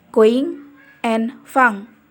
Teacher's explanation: Oral passage is blocked by pressing the back of your tongue against the soft palate or velar.